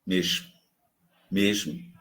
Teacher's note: No Recife, mesmo, mesmo, mais chiado.